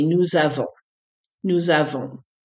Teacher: the S from the nous running into a vowel sounds like a Z. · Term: Z sound